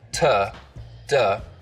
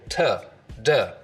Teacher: We just use the narrow edge of the tongue, so it's a more focused contact area, tuh, duh. Contact area. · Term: edge-focused